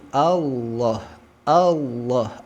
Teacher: Allah a-nya tipis lam tebal Allah jangan juga memunculkan bunyi penghubung contoh Allah Allah nah jangan